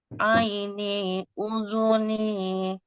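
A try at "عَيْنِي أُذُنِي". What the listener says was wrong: ni-nya ketinggalan, Bu. Ni-nya kurang panjang.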